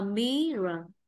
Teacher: Mirror vậy ta thấy âm ngang rơi vào âm tiết một nên trọng âm rơi vào âm tiết một